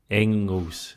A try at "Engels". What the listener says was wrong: The G's not pronounced, so it's Engels. It's not a hard G.